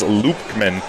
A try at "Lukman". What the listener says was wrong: Just so I talked with their coaches, no B, it's Lukman.